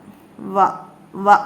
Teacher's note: 2 side touch ആകുന്നുള്ളൂ, നടുഭാഗം അല്പം തുറന്നിടണം